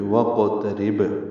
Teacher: تا باریک ہے، را باریک ہے، را کو با سے ملائیں گے، قلقلہ ہوگا با ساکن پہ